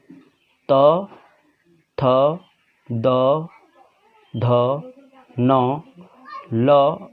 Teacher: आप ये वर्ण जो त, थ, द, ध, न, ल या दंत स का जब आप उच्चारण करते हैं तो आपकी जो जीभ है वो दांत को जाके टच करता है